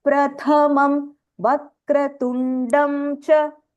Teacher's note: The tha is Mahapranaha.